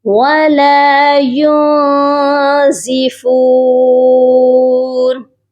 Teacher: اس نون ساکن پر آواز کو ناک میں چھپائیں گے